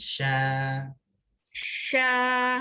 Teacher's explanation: Daripada dalam. Tengah lidah. Naik ke langit-langit. Ya, berbetulan dengan langit. Tekan. Bunyikan shin.